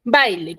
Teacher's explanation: baile tiene dos sílabas, porque si tú me silabeas con tres, ahí me estarías produciendo hiato. Y baile no tiene hiato.